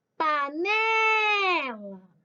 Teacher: panela a penúltima sílaba forte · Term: paroxítona